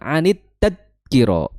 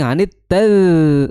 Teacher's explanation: Jadi bukan anit tadkiro tapi anit taz. Nah itu taz suaranya masih ngalir ya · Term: huruf dza